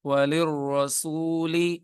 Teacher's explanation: یہاں پہ لام بریک پڑھنا ہے